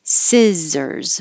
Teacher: Remember that the stressed vowel in this word is I, like hit or sit, and not E.